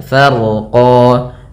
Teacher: kemudian ro-nya dibaca dengan tebal karena huruf ro yang dia sukun sebelumnya fathah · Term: ro-nya tebal